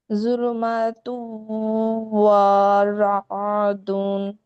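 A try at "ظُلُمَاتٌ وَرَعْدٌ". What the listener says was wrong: এই যে ওয়ারাদুন, ওয়া তো টান চলে আসলো, যুলুমাতু ওয়ারাদুন, হরকত আমরা তাড়াতাড়ি পড়বো, হরকতকে আমরা কোনো ভাবে, যুলুমা,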